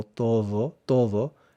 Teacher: la D entre vocales, como en la palabra todo, no se pronuncia de forma muy fuerte. Es más como todo, todo, pero cuando se habla rápido se puede pronunciar más o se puede perder la D.